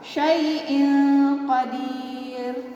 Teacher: Kemudian yang ini adalah contoh tanwin. Tanwin bertemu dengan qaf. Ya, sama, bacanya juga samar.